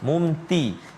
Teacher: Ta dia ada tebal dia ada terangkat dia, sempit ruang udara keluar